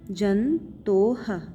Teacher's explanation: विसर्ग को हम ह पढ़ते हैं, ह जंतोः, भीतिम शेष जंतोः, भीतिम शेष जंतोः।